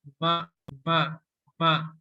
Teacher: huruf mim ini juga memiliki makhraj al-khayshum atau keluar dari rongga hidung ya